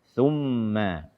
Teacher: Karena kita ingatkan kembali, wadh-dha wadh-dhal wa thalil ulya min tarafayhima. Makhraj dha, dzal dan tha adalah ujung lidah bersentuhan dengan ujung gigi seri atas